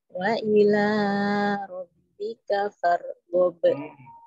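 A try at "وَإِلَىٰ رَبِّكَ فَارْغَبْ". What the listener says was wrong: Aslinya kepanjangan mulu. Mat aslinya yang wa ila kepanjangan nih. Huruf baknya juga jangan tebal ya, pantulan tebalnya. Baknya tipis.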